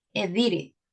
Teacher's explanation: Most of the time when we have letter T between two vowels, it sounds like R in Spanish.